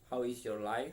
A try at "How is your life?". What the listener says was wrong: Ya udah betul ya kalau ini dibacanya how is your life ya.